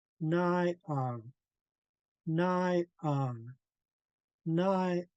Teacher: a perfect example of high tone and then low tone